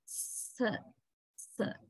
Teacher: Sir is also alveolar consonant, which means when we produce sir, our tip of the tongue rises slightly and goes near the alveolar ridge. It does not touch the alveolar ridge